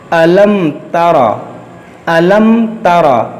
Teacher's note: یہاں پر دیکھیے میم ساکن کے بعد تا ہے، تو یہاں پر اظہار شفوی ہوگا، یعنی یہاں پر غنہ نہیں ہوگا، کیونکہ میم ساکن کے بعد نہ میم ہے نہ با ہے، تو یہاں پر اظہار شفوی ہوگا